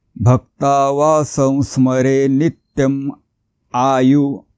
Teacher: करतो म्हणून भक्तावा संस्मरे नित इथे पण पुन्हा टिंब आला आणि टिंबाच्या पुढे आहे स्वर आ हा स्वर आहे म्हणून इथे टिंबाच्या जागी म वापरायचा आहे